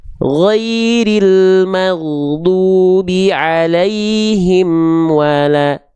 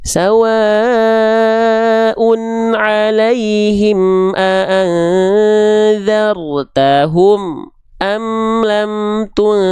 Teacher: Tawassut tengah-tengah artinya dia tidak terlalu mengalir, tapi juga dia tidak tertahan. Amnya harus ngalir sedikit.